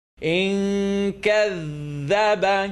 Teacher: Noon sukoon followed by kaf, tongue not touch